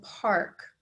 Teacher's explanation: in park, I don't hear the short A. It makes a new sound. It's that pirate sound of R. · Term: R controlled vowels